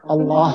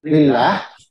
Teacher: Misalkan Allah itu tebal, kemudian kalau lillah, maka dia ditipiskan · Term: tafkhim